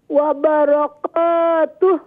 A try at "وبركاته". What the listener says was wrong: كاف is light وبركاته no كا no كا وبركاته